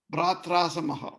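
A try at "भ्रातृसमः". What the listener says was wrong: What is here? A is missing.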